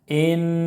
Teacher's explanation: نون مشدد ہے اس لیے کہ الف کے برابر غنہ کریں گے